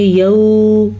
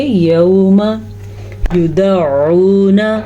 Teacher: یہ واو لین کہلائی جاتی ہے، اسے کسی صورت میں لمبا نہیں کیا جاتا ہے۔ اگر کوئی پڑھے گا یوما، تھوڑا سا بھی لمبا کیا تو تحقیق اس نے غلط پڑھ لیا۔